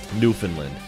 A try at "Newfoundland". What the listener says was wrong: Nope. That is not how you pronounce that, and you know that. It's not New Finland. We don't have a New Finland.